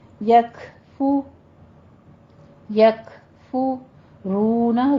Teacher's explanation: کاف پہ ہمس کرنا ہے، فا پہ دونوں ہونٹ گول کیجئے · رونا میں 2 کاؤنٹ کرنا ہے، واو مدہ ہے